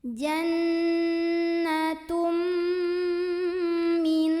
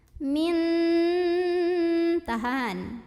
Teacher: nun yang sukun dileburkan dengan nun kedua sambil dengung. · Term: idgham mutamatsilain